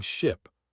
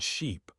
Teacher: Focus on vowel length instead. Confusing ship, short I, and sheep. Long e causes much more confusion and embarrassment than th ever will.